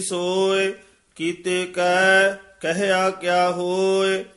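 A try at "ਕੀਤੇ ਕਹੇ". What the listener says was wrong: जी कीते कह कहे उच्चारण करना। कहया नहीं कहना। कीते कह कहे क्या हुए आपे सच भावे तिस सच।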